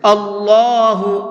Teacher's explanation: اللہ کے لام سے پہلے زبر ہوتا ہے تو اللہ کے لام کو منہ بھر کے پڑھتے ہیں۔